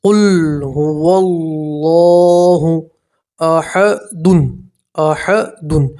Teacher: اللہ کے لام سے پہلے زبر ہوتا ہے تو اللہ کے لام کو پور پڑھتے ہیں، موٹا پڑھتے ہیں۔